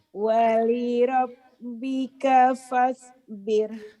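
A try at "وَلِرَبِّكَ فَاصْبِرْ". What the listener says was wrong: Kurang. Sod. Wali rabbika fas. Ngonyong dikit. Nyunyu. Fas. Bir. Wali rabbika fas. Sodnya kurang apa ibarat durian itu. Ibarat durian itu udah mau matang enak tapi belum berair gitu loh. Belum pas bir. Fas bir.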